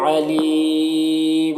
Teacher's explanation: علیم یہاں پر وقف کی صورت میں مد عارض وقفی ہوگا